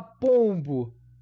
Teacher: Eu tenho um fonema P aí eu tenho o om anasalado